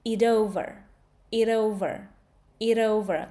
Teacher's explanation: T actually turns into d.